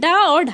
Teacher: उच्चारण स्थान के आधार पर मूर्धन्य व्यंजन